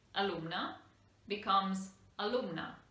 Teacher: changes but in this case the pronunciation is exactly the same because this is an unstressed vowel and therefore e and a have the same neutral sound